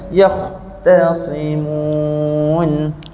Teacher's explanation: Tapi ta jangan bunyi huruf ta, kita tak nak terpengaruh dengan ketebalan huruf kha. Kha dekat sini tebal, huruf ta ni nipis.